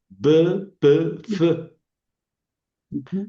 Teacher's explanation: La B es suave, la P es explosiva y la F es aspirada. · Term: labiales